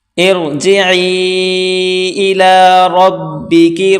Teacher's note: را زیر را کو موٹا کر کے پڑھیں گے